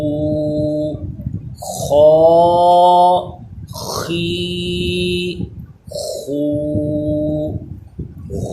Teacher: یہ حلق کے اوپر والے حصے سے ادا ہوتا ہے، خراٹے کی آواز اس میں آتی ہے، اور اس کو پر بھی پڑھتے ہیں۔